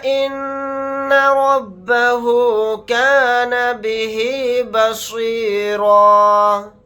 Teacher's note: یہاں پر ہم مد کر کے پڑھیں گے, یعنی اس مد کو 3 الف کی مقدار کھینچ کر پڑھیں گے. نون کے اوپر تشدید ہے تو اس میں غنہ کر کے پڑھیں گے. را کو یہاں پر موٹا یعنی پر پڑھیں گے.